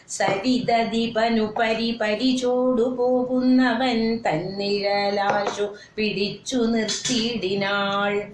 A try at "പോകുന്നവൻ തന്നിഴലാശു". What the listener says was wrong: അവിടെ ചേർത്ത് വായിക്കണം. പോകുന്നവൻ തന്നിഴൽ, അങ്ങനെ ഒന്നിച്ച് വായിക്കണം, നിർത്തരുത്. വായിക്കരുത്. പോകുന്നവൻ തൻ അതേന്ന് പോകുന്നവന്റെ എന്നുള്ള പ്രത്യേകമാണ് അവിടെ. പോകുന്നവൻ അപ്പൊ അത് ധ്വനിക്കത്തക്ക വിധത്തിൽ വായിക്കണം എന്നർത്ഥം. അതായത് ഇപ്പോ സരിതദീപനു പരിചോടു പോകുന്നവൻ തന്നിഴലാശു, അങ്ങനെ വായിച്ചാൽ അങ്ങനെ പോകുന്നവൻ തന്നിഴലാശു പിടിച്ചു, അങ്ങനെയല്ലേ തോന്നുന്നത്. തോന്നരുത് എന്നർത്ഥം. ഒരു അവിടെ വിശ്രാന്തി കൊടുക്കാതെ വായിച്ചു പോവാ.